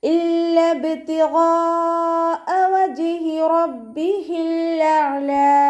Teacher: ഐനിനും half സുക്കൂന് കൊടുത്തിട്ട് ഉച്ചരിക്കുക. അവസാനത്തിൽ ലാമിന് നമ്മൾ 2 കൗണ്ട് നീട്ടി നിർത്തി കൊടുക്കുക.